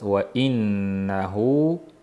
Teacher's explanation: Nunda g'unna borligi uchun h ga ham o'tib ketib qoladi ayrimlarda. Va innahu bo'lib burundan chiqmasin, hu bo'lib og'izdan chiqsin.